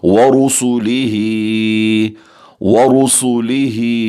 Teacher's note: Next وَرُسُلِهِ، را کو پر پڑھیں گے، اور را کے نیچے زیر ہو تو باریک، لیکن اگر را کے اوپر زبر اور پیش ہو تو را پر پڑھی جاتی ہے، موٹا کر کے پڑھی جائے گی۔ سین کو ہم سیٹی کی آواز سے پڑھیں گے، آ کے نیچے کھڑی زیر ہم اسے کھینچ کر پڑھیں گے، جیسے کہ وَرُسُلِهِ، وَرُسُلِهِ۔